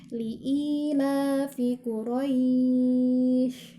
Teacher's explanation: huruf syin yang sifatnya adalah ada angin yang keluar dan menyebar jadi kalau kita taruh tangan kita telapak tangan kita di depan